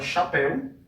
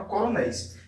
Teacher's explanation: a gente tem o encontro de duas vogais, sendo a primeira vogal mais forte, a segunda vogal um pouco mais fraca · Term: ditongo decrescente